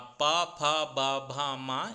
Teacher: अर्थात इन्हें होठ की सहायता से बोला जाता है। प फ ब भ म इन सभी को बोलेंगे तो प्राय आप इनको अपने ओष्ठ अपने होठों की सहायता से ही बोल पाएंगे।